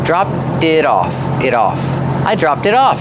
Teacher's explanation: And the T in it is a fast D because it's between vowels.